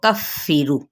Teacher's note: फ़ा पे शिद्दत करते यानी दबा के पढ़ना है इसको